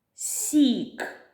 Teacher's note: перший звук с це М'який приголосний